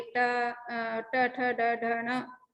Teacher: ये यहाँ मूर्धन्य यानी मूर्धा से पैदा होते हैं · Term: सेरेब्रल लेटर्स